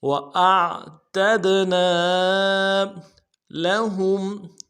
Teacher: لام کو نرم سے ادا کرنا ہے، ہا کو میم ساکن کے ساتھ ملانا ہے، یہاں پہ اظہار ہوگا۔